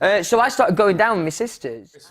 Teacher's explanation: One very distinct characteristic of his accent is how he pronounces the word my. Instead of hearing a combined sound of two vowels together, a diphthong, as I'd say it my, he pronounces it with only one sound